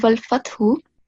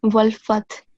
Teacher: So first of all, in the first verse, when you, at the end of every verse, you should pause, and when you pause, the last stroke will be silent, so you don't pronounce it